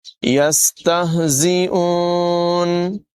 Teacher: سین میں سیٹی کی آواز ہے، زا میں بھی سیٹی کی آواز ہے۔